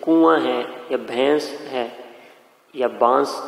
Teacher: ان الفاظ میں آواز ناک میں جا رہی ہے اور وہی غنہ ہے